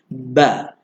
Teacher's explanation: Tutup sebab kita nak sebut bunyi ba tu. Buka sebab baris atas jadi digabungkan bunyi dia ba.